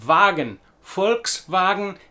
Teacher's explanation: You will also notice our first major difference in pronunciation in that the V sound at the beginning of the word Volk and Volkswagen is very much like an English F, and the W sound on the beginning of Wagen, Volkswagen, is more in line with a German V